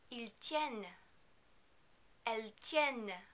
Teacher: For the il and L plural form, you need to remember not to pronounce the final S on il and L, and also not to pronounce the final NT on the verb. However, you are going to pronounce the N sound in the middle of the verb. This is because it is followed by a silent E.